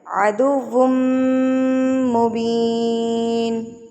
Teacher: میم مشدد تو اس کو آپ نے غنہ کر کے پڑھنا ہے